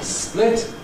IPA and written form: splɪt (split)